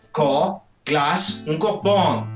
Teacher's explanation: Le son ɑ:, lui, n'est pas pré-ouvert, il est complètement ouvert. · Pour cela, prononcez un A, mais agrandissez un peu plus la bouche, rétractez la langue et faites plus long. Le son A, lui, n'est pas pré-ouvert, il est complètement ouvert.